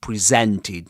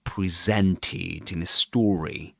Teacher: He doesn't say presented. That z sound, in presented. That's the way you pronounce that word. Presented in a story.